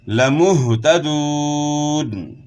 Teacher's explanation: ہا کی آواز گلے کے آخر سے ہوگی اور اس کے بعد پھر واو مدہ ہے